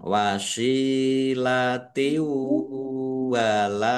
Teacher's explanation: Idgham bi ghunah masuk dengan mendengung. yaitu mendengung wau ditahan